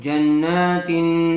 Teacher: تنوین کے بعد حروف اخفا میں سے تا آیا ہوا ہے اس لیے غننے کے ساتھ اخفا کر کے پڑھیں گے